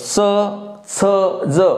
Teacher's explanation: जो आपल्या बघा ना याचा उच्चार करतो च छ ज म्हणजे दाताच्या वर ज्याला आपण हिरडीचा भाग म्हणतो कठीण तिथे त्याचा स्पर्श होतो त्याला तालव्य म्हणतात